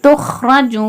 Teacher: வாவ் பேஷ் வாவே மத்தா, ஒரு அலிஃப்க்கு நிகராக நீட்டி ஓதணும்